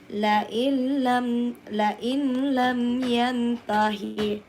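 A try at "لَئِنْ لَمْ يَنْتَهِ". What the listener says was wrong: La bukan lain, lail langsung lam. iya, tidak ini nunnya hilang, masuk ke lam. Makanya bila guna tidak dengun.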